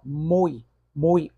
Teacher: ou sai com mais intensidade então sei que ele é vogal e o i torna-se a semivogal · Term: ditongo